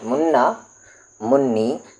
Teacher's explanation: نون پر تشدید ہے اس لیے نون کو 2 بار پڑھیں گے، منی لکھیں گے ایک ہی بار، پڑھیں گے 2 بار.